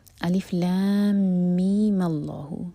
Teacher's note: میم جب ہم اگلی آیت سے جوڑیں گے تو میم کا لینتھ 2 ہی حرکہ ہوگی، تب اس پر مد لازم نہیں ہوگا